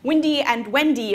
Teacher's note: Windy and Wendy are homophones for me. So they're words that sound the same.